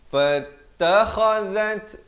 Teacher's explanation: za di hujung lidah. Zat ada bunyi hamas ya. Samarkan 2 harakat.